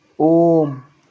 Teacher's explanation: दीर्घ स्वर से तीन गुना समय लगता है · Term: प्लुत स्वर